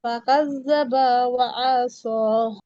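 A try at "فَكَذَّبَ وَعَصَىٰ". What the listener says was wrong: আইনে জবর না। ফাকাজ্জাবা ওয়া, মানে আইনে টান নেই আর কি, সরি। ফাকাজ্জাবা ওয়া আসা।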